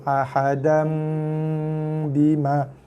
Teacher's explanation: Kalau mim ni ada tanda mim ni duduk kat tengah-tengah bacaan, kita kena baca dia dengan dengung tutup mulut 2 harakat. Dengung tutup mulut yang lembut. Jangan dikacik 2 bibir, tertutup mulut, bibir bersentuhan dengan lembut 2 harakat.